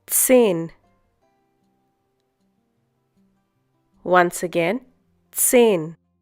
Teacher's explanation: the pronunciation of Z in German. It's TS